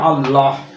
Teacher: এই হ টা উচ্চারণ করলে আল্লাহ এটা কিন্তু কণ্ঠ থেকে উচ্চারিত হচ্ছে